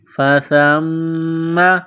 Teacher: سا کو پڑھتے وقت زبان تھوڑی سی باہر نکالیں گے